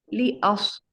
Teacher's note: सौद की आवाज में ये सौद पुर होता है और सीटी की आवाज के साथ अदा होता है।